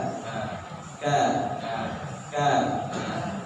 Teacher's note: Kaf di Pangkal lidah tapi di bawah Kaf di Pangkal lidah tapi letaknya di bawah huruf qf ya